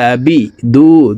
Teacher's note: আইন খারা জবর আ, হলকের মধ্যখান থেকে উচ্চারণ করব। আবি দু, দু 1 আলিফ টান।